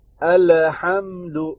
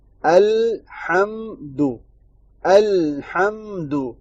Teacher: الف اور یہ حمزہ اور لام کے اوپر جو ہے نا ساکن، لام کو حرکت دے دیتے ہیں، حالانکہ اس کو ساکن کرنا ہے